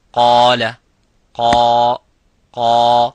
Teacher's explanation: so the alif is mufakham, it is a heavy because of the qaf. So whenever the letter is heavy, you make the letter alif qaf, the letter alif of mad heavy.